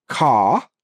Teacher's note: the R sound is not pronounced at the end of a word or before a consonant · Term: non-rhotic